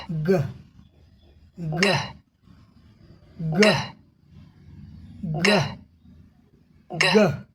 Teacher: जिह्वा का पिछला भाग देख रहे हैं, यह क्या करती है, ऊपर स्पर्श कर लेती है जिससे हवा रुक जाती है। दूसरे चरण में आ गए, move back of tongue away from top of mouth, और मुख के उस ऊपर भाग से हम अपने जीभ को नीचे की तरफ ले आते हैं।